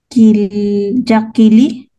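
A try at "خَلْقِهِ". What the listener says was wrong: Litrang kha. Yan ay litrang kha sa una. Khal. Khalqihi. Khalqihi. Kasi litrang ha yung sa dulo.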